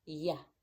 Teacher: It's different from an R, because with an R, your tongue is flat and pulled back. But with a Y, your tongue is bent with the tip downward, close to the bottom teeth, and pulled a little bit back